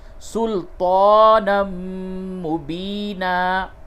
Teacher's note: تا کو پڑ کر کے بولتے ہیں، منہ بھر کے اس کی آواز نکلے گی، یہ تا کی، سلطانا مبینا۔